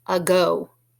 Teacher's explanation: Do you recognize the beginning sound in ago? It's the same beginning sound that we had in the word again. It's the schwa sound. The A is making the sound.